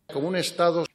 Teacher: La O de como fue omitida al encontrarse con la U.